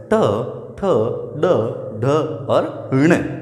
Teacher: ण तो इनका जब अपन उच्चारण करते हैं तो मर्दा यानी दांतों से थोड़ा सा ऊपर की तरफ वहां पर जो है जीवा टकराती है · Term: ट वर्ग